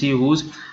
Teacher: starting sounds will be glottals because it is having ha sound. No matter it is having the spelling WHO or WHOSE, whose, but this sound will be described as a voiceless glottal.